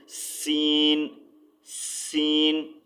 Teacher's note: सीन की आवाज़ बारीक और सीटी वाली होती है